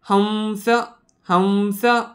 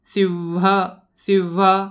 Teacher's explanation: अनुस्वाराचा उच्चारण करताना नेहमी लक्षात ठेवायचं की व सारखा साऊंड प्रोड्यूस करायचा आहे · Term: व सारखा उच्चार